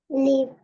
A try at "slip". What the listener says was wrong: Yung S, wag kalimutan yung S. Magiging, sleep.